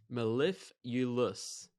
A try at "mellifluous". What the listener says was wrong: I don't have that U that you do. Mellif, and then right after that, I'm just going straight into... Mellifluous is kind of how I'm doing